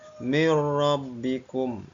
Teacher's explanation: ada nun mati bertemu dengan huruf ro cara membacanya adalah mirbikum suara Nun sukunnya hilang masuk ke dalam huruf ro seolah-olah tidak ada nun mati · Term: idgham bila gunnah